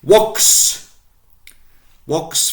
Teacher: Notice the elongation of the O.